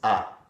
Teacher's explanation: in Brazilian Portuguese we pronounce vowels a certain way right so a is aa it's a very open sound compared to English